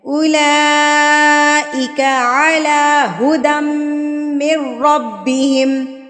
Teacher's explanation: لام کے اوپر مد ہے، پر کھڑی زبر ہے تو اس کو ہم نے 6 حرکات کے برابر کھینچنا ہے